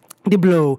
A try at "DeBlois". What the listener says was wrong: No L. Yeah, no L. Yeah, it's French.